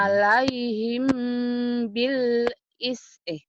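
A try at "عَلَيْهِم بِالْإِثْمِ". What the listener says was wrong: bil ismi benar.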